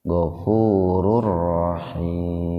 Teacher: Ini idgham bila guna, Pak. Dimasukkan tapi tanpa mendengung